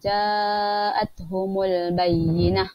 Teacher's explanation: alif mad berjumpa dengan hamzah dalam satu kalimah, maka hukumnya adalah mad wajib muttasil, dibaca secara 4 atau 5 harkat